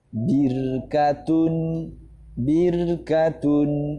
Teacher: jangan sampai dibaca tafkhim birkatun, tidak, tapi meringis. Birkatun. Nah, jadi ketika ra sukun didahului kasroh maka dibaca tarkik.